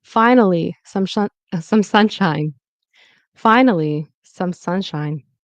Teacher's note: finally on the fine. That's where the stress is.